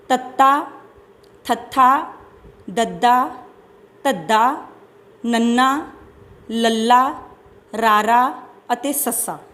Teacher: ਦੰਤੀ ਵਿਅੰਜਨ ਧੁਨੀਆਂ ਉਹ ਵਿਅੰਜਨ ਧੁਨੀਆਂ ਹੁੰਦੀਆਂ ਨੇ ਜਿਨ੍ਹਾਂ ਦੇ ਉਚਾਰਨ ਸਮੇਂ ਜੀਭ ਜਿਹੜੀ ਆ ਉਹ ਦੰਦਾਂ ਦੇ ਅੰਦਰਲੇ ਪਾਸੇ ਨੂੰ ਛੂੰਹਦੀ ਹੈ।